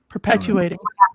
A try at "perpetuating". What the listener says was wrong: No L. No L.